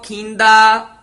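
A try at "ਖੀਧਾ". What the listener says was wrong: ਖੀਦਾ ਧਦੇ ਨਾਲ ਬੋਲਣਾ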